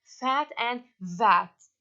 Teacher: The sounds that are formed with the upper teeth and the lower lip. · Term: labiodentals